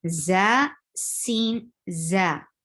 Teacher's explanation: when you touch za, you will give a buzzing sound, whistle sound in it. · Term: whistling sounds